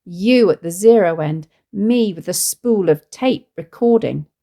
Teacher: the words you and me both falling on a stressed syllable, which puts emphasis on these words